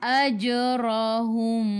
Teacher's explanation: Mim bertemu dengan ba. Ikhfa syafawi. Dengung 2 harakat. Rapatkan bibir tapi jangan tekan.